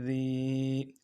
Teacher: یا مدہ ایک الف مقدار میں کھینچیں گے